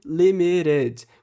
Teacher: fazer esse som de um R fraquinho quando o T está entre vogais. Então, por exemplo, limited vira limited, com um som de R mesmo.